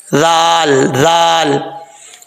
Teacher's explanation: خا حروف مستعلیہ میں سے ہے، خا پر پڑھا جائے گا، نتا خا ذو، زال کے بعد واو ہے، اور زال جو ہے یہ بغیر سیٹی کے پڑھا جائے گا، یہ سیٹی والا حرف نہیں ہے، اس کا مخرج کئی دفعہ آپ کو پہلے بتا چکا ہوں، زبان کا سرا اوپر والے دانتوں کے اندرونی کنارے سے لگے تو یہ زال پڑھا جاتا ہے بغیر سیٹی کے